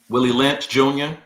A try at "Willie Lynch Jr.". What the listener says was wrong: You said Junior too fast. You gotta go Willie Lynch Jr.